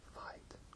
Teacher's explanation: In Quebec French, we say fight, which kind of sounds like a diphthong